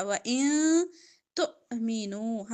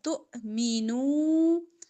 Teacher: حمزہ پہ جزم ہے جھٹکا